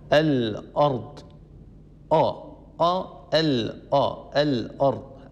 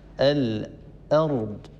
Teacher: الهمزة هي حرف حقه الاستفال ومستحقه الترقيق، فهنا ننتبه لابد أن نصفي وأن نخلص الحروف من بعضها. همزة مستفلة مرققة ثم ننتقل إلى راء مفخمة